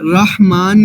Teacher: یہ جیم والی ہا ہے جو بالکل درمیان سے ہم ادا کر رہے ہیں